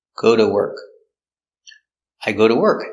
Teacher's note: we use the D for the T between two vowels